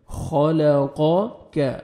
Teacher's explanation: خا کو موٹا کر کے پڑھیں گے، قاف کو موٹا کر کے پڑھیں گے، اور کاف کو آپ نے باریک پڑھنا ہے